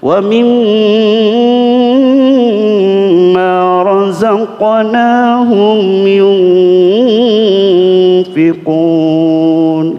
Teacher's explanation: Dengungnya nun sama mim. Nun bertasdid sama mim bertasdid. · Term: taghonni